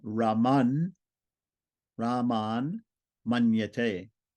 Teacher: It's a dental T. It's going to turn into a nasal, dental nasal.